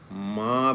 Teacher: माँ बोलते समय दोनों होंठ बंद हो गए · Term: मकार